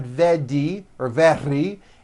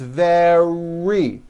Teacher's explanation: make sure that the r sound is strong and your lips are coming forward your tongue is back and you push out the r very like that practice these sentences with me nice and slow